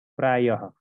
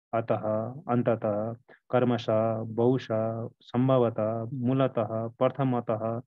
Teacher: यो जो विसर्ग चिन्ह लेखिएको छ नि, यो उच्चारणको क्रममा हलन्त ह उच्चारण हुन्छ। ह उच्चारण हुने विसर्ग चिन्ह हो।